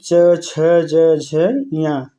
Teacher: च वर्ग के अंतर्गत कौन-कौन से वर्ण आते हैं? तो च, छ, ज, झ, ञ और इसका उच्चारण स्थान क्या है? तालु